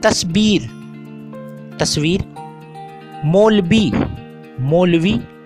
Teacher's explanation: अक्सर अल्फाज हे के बग़ैर तलफ़ुज़ किए जाते हैं, जैसे आहिस्ता से आस्ता, नहीं से नई वगैरह। कलकतिया उर्दू में वाव अक्सर बे में बदल जाता है